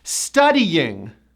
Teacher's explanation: Now, this word has 3 syllables, not 2 syllables, because most of my clients pronounce this word with 2, but it's 3 syllables. Studying with a strong Y, which you have to push.